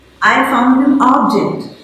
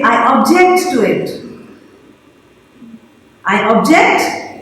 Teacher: If you use it as a noun, you stress the first syllable. You use it as a verb, you stress the second syllable.